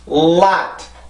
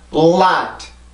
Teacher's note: 자, 그래서 이 발음을 따로따로 발음을 하면 lot, 치조가 강하게 눌리는 유음이죠. 치조를 눌러주고 목에서 성대 울림이 올라와서 만드는 소리예요.